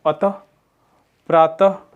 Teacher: विसर्ग केवल संस्कृत तत्सम के मूल शब्दों में आते हैं। इसका उच्चारण हल्के ह की तरह एक झटके के साथ किया जाता है।